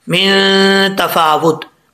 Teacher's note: नून साकिन का इख्वा है, एक अलिफ की मकदार गुना करेंगे